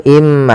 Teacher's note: Maka cara bacanya masukkan ke huruf mim, yaitu imma, bukan lagi inma tapi imma, sambil ditahan gunnahnya 2 harokat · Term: idgham bi gunnah